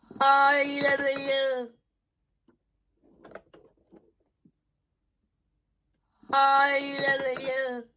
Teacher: I can hear an epenthetic vowel after the V sound.